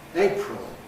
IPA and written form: ˈeɪprəl (April)